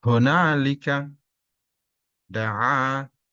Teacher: Berkaitan dengan mat, dalam ayat ini ada mat tabi'i, mat asli, dibaca dua harakat. Cirinya alif didahului fathah.